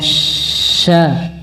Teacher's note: Fa, ha, ya, ada aliran nafas. Sya, ada hamas, bahkan ada tafashi, menyebar, angin menyebar